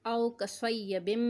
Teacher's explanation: गुन्ना करना है, मीम मुशद्दद है, मीम के ऊपर तजदीद आ रहा है, मीम मुशद्दद कहलाता है।